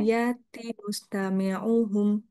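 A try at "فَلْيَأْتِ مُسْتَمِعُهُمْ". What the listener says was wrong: Ya-nya kurang jelas lagi. Fal ya.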